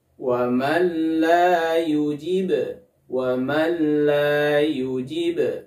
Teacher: Di sini ada nun sukun bertemu dengan huruf lam. Maka cukup dimasukkan nun sukun ke huruf lamnya. Tidak boleh disertai dengan gunnah. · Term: idgham bila gunnah